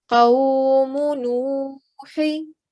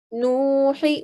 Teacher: There's a short stroke of dhamma followed by a vowel sakin. So we stretch the sound out for 2 seconds or 2 counts. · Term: vowel mad